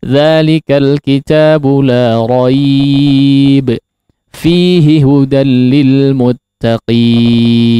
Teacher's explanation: Mad arid lisukunnya minimal 4 harakat sama dengan mad linnya